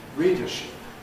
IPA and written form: ˈriːdəʃɪp (readership)